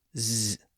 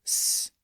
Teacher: By the way, I've noted this before, but the S and Z sounds are basically the same sound. The only difference is that the vocal cords are activated when we pronounce the Z sound. So it creates a buzzing sound Z.